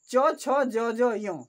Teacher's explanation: हर्षई, दीर्घई, च वर्ग, य और तलव्य स का उच्चारण स्थान तालु है।